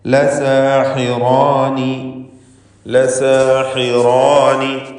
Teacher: സീനും അതിൻ്റെ ദീർഘാക്ഷരമായ അലിഫും തർക്കീഖ് ചെയ്യുന്നു. അലിഫിലും തർക്കീഖ്, എന്നാൽ റായിനും അലിഫിനും തഫ്ഖീം.